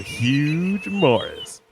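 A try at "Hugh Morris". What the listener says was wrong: I don't think it's pronounced huge.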